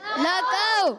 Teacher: واو ساکن سے پہلے زبر آ رہا ہے, واو لین ہوگا. قاف کو موٹا رکھنا ہے.